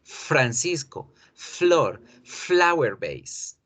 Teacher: Una vibración no, un alargamiento de la consonante con la F.